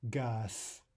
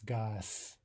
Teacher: final Z is devoiced to an S